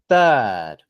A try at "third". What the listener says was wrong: So same thing. Try to make the TH sound at the beginning a bit longer. Third.